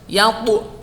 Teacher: Suara tambahannya itu, qalqalahnya itu kuat.